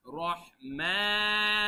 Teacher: এই যে মা এখানে এক আলিফ টান আছে রহমানির